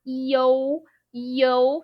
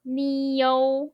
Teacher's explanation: Be careful when you see like u sound. It has a hidden o sound in between them. So instead of eu, is actually e-o-u sound. Yo.